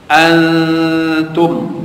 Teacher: Antum, nun mati bertemu dengan ta, ikhfa, ikhfa dengan makna menyembunyikan atau mensamarkan ketika membacanya dengan dengung